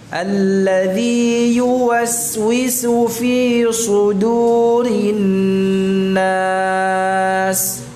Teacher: Jadi dalnya tidak terpengaruh tebalnya shad sebelumnya ya. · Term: tipis dalnya